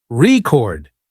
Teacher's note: but if you stress the second syllable record it's a verb